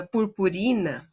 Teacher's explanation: a sílaba tônica dela, purpurina, é no ri.